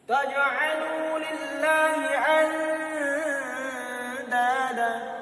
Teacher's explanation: nun mati dibaca samar-samar seperti dipadukan, dicampurkan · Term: ikhfa hakiki